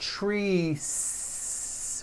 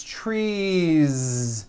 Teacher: It's not trees with an unvoiced s. It's trees with that voiced ending.